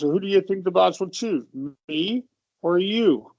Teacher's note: For the choice question, you're going to go up for each choice and then down for the last one.